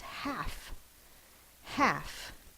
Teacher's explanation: when we look up the word half in the dictionary and when we say the word half we do not say that l sound